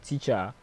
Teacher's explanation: teacher has the stress on the first syllable